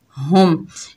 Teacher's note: यहाँ पर मीम का इजहार होगा, इससे इजहार शफवी भी कहते हैं